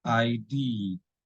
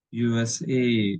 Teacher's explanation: abbreviation stress the last letter